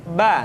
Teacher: dikeluarkan dengan cara merapatkan kedua bibir kita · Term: huruf bar